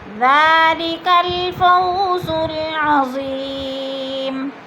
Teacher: الفو میں وولین ہے، وولین کو لمبا بھی نہیں کرنا اور جھٹکا بھی نہیں دینا۔ عظیم میں یا مدہ ہو رہا ہے۔